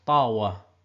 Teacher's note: the V is pronounced as a w in the Eastern dialects